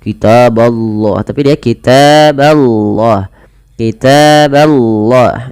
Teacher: Allahnya didahului dengan fathah maka lafal Allah tebal tapi huruf bnya tidak boleh ditebalkan ya teman-teman contoh kitaballah tapi dia kitaballah kitaballah ya bnya tipis